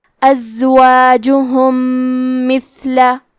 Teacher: تو ہم میم ساکن کو دوسرے میم میں ملا کے ایک ہی میم غنہ اور تشدید کے ساتھ پڑھیں گے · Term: ادغام متماثلین صغیر